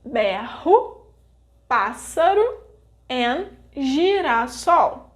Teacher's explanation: the clusters R e R and S e S will have the sounds H and S, and they will only occur in between vogais and in the middle of the words, never in the beginning.